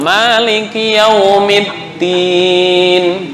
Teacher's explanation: Dal ujung lidah dengan apa istilahnya, pangkal gigi bagian dalam. Maliki Yaumiddin, ujung lidah dengan pangkal gigi.